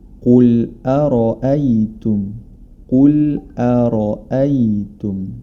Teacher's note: Huruf ra dibaca tebal karena dia berharokat fathah. Hati-hati jangan sampai hamzah di sebelum huruf ra atau setelahnya ikut menjadi tebal, karena huruf ra saja yang tebal.